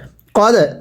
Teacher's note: ধাক্কা দিয়ে পড়ব, দালে যদি সাকিন হয় কলকলা করে পড়তে হয়।